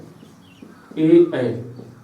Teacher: इन दोनों का उच्चारण स्थान कंठ और ताल, कंठ ताल दोनों